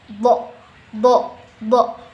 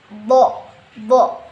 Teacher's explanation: ujung lidah bertemu dengan langit-langit depan yang atas, do. Nah, gitu. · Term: huruf do